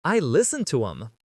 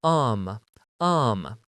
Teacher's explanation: I listen to um um the word them has the th cut out and instead you're saying um um I listen to them.